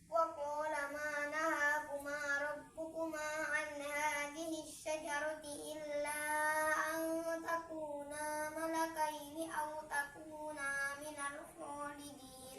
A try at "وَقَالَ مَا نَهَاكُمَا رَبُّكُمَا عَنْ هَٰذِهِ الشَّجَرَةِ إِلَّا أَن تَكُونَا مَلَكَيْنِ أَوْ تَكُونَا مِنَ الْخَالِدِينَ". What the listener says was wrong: Takuna wala taqraba, banyak panjang. Hilang satunya.